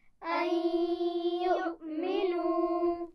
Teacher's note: نون ساکن کے بعد یا ہے دوسرے لفظ میں تو ہم ملائیں گے بھی اور غنہ بھی کریں گے